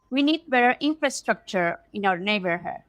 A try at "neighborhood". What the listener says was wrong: Notice your B. Neighbor, not neighbor. Yeah, close your lips. Neighborhood.